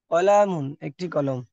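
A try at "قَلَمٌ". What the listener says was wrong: কলামুনে টান নেই, কলামুন, একটি কলম।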